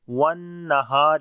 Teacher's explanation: نون کے اوپر شد ہے، غنہ کریں گے، ہا کو لمبا کریں گے، الف مدہ ہے، را کے نیچے زیر ہے، باریک پڑھیں گے۔